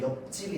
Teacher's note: 피읍이 비읍으로 발음되고 비읍이 뒤에 지에 영향을 줘서 옆집이 됩니다